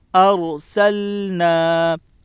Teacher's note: لام کے اوپر جزم ہے، جزم والے حرف کو پیچھے والے حرف سے ملا کر پڑھیں. الف سے پہلے زبر ہے، اس لیے الف مدہ ہوگا. الف مدہ کو ایک الف کے برابر کھینچ کر پڑھیں